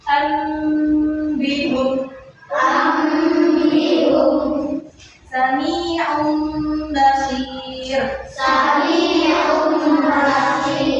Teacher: ketemu huruf ba itu harus ditahan. Sekiranya itu keluar dari hidung nafasnya ya